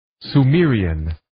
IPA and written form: suː'miːəriːən (Sumerian)